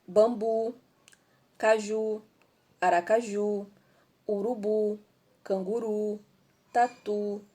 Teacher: elas são oxítonas porque a sílaba tônica é a última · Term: palavras oxítonas